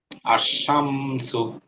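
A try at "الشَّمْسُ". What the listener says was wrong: এই যে সিন হচ্ছে, সিনটা আসছে না, আর শামসু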